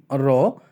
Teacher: এই ধ্বনিটি উচ্চারণের সময় জিহ্বায় একটু কম্পন সৃষ্টি হয় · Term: কম্পিত ধ্বনি